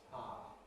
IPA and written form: ˈpaˑə (power)